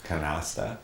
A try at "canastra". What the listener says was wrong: Canastra. With an R.